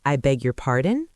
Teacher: You could say, I beg your pardon? with a rising intonation.